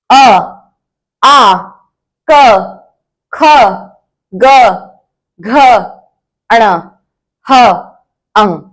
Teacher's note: अब आपने देखा होगा कि जो सीधे इनकी आवाज है वो हमारे गले से आती है, तो ये होते हैं कंठया वर्णः।